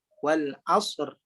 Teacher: sad ada sifat desiran dan ada mengeluarkan angin